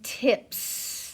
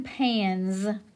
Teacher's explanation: if it comes after an unvoiced consonant then the S is unvoiced as in tips if s comes after a voiced consonant then the S makes a z sound as in pans